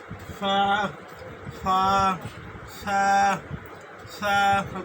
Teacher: নিচের ঠোঁটের পেট আর সামনের উপরে দুই দাঁতের সঙ্গে লাগাইয়া তা ফা শব্দটি উচ্চারিত হয়।